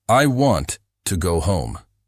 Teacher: I want to go home. Stress on want.